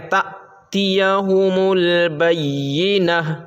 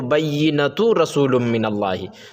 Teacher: حتی تأتیہم البینہ، اصل میں ہے بینۃ، مگر آپ نے نورانی قاعدہ میں پڑھا کہ جب گول تا، دو طرح کے تا ہوتے ہیں، ایک لمبی تا ہوتی ہے اور ایک گول تا ہوتی ہے، اور جب گول تا پر وقف کرتے ہیں تو وہ ہائے ساکنہ بن جاتی ہے۔ وقف یعنی ٹھہرنے کی صورت میں، اب یہاں پہ جو ہے ہم ٹھہر رہے ہیں، تأتیہم البینہ، وقف کر رہے ہیں، وقف کا مطلب ٹھہرنا، تو ٹھہر رہے ہیں تو یہ بینۃ سے بینہ، ہائے ساکنہ، ہاں ساکن ہو جائے گی، ٹھیک ہے۔